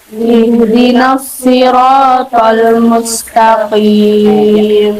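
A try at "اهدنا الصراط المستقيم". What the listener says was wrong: Huruf H makrotnya ada di mana ya? Huruf H di iya, di tenggorokan. Jadi bukan di dada, bukan tapi lebih halus lagi. Ihdinas siratal mustaqim.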